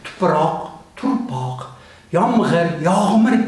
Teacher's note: Shu hodisalardan biri, masalan, metatiza, tuproq, turpoq, yomg'ir, yog'mir ko'rinishda aytilishlari bu xalq shevalariga xos fonetik jarayonning bir ko'rinishi metatiza hisoblanadi